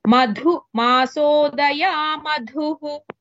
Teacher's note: in all cases మధు ధా ఇస్ మహాప్రాణ · मधुजिह्वा मधुमती मधुजिह्वा मधुमती मधुजिह्वा मधुमती both words dha महाप्राण मधुमासोदया मधुः here all madhus have mahaprana masodaya daya da is alpa prana here madhujihva madhumati in all cases madhu dha is mahaprana